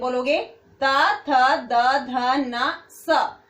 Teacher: जब आप ये बोलोगे बेटे आपकी जीभ कहां टच कर रही है? आपके दांतों को।